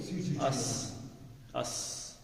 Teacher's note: سین جیسے زے میں سیٹی کی آواز ہے ایسے ہی سین میں بھی